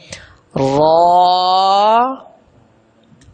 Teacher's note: حرف جو را ہے اکیلا حرف، یہ ہر وقت ہی پر پڑھا جائے گا